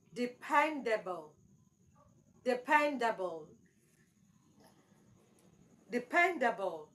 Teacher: is an adjective the correct pronunciation is Dependable depend Dependable dependable so your stress should be on the second syllable pen